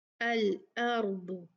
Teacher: را بھی ہیوی ہے، ضاد بھی ہیوی ہے، لیکن یہاں ہم را کی بات کر رہے ہیں تو اس کی را ہیوی ہوگی.